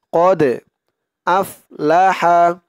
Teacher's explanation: দালটা কলকলার হরফ ধাক্কা দিতে হবে কদ আফলাহা আফ হামজা দিয়ে ফা ধরবে আফ কদ আফলাহা মান